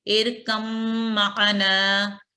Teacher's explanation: اور کیونکہ ہم ساکن حرف کو نہیں پڑھیں گے، اس وجہ سے جو متحرک لیٹر ہوتا ہے جیسے میم یہاں کی مثال میں ہے، وہ اس کے اوپر تشدید آ جاتی ہے اور اس کو ہم پڑھیں گے ارکم معنا. یہاں میم کیونکہ تشدید رکھتا ہے اس وجہ سے یہاں اس کے اوپر غنہ کیا جائے گا